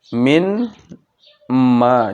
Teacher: Syaddah, ia masuk, 'min' masuk ke sukun 'nun', masuk ke 'mim', bergabung dan divokal dengan ghunnah